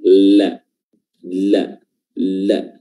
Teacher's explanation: makhraj huruf lam adalah ujung lidah ya, atau ujung tepi lidah bertemu dengan langit-langit bagian depan